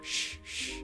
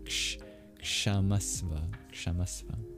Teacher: That's K, and then there's a retroflex sibilant ksh, sh, sh. It's almost similar to the X sound in English, but you curl your tongue back.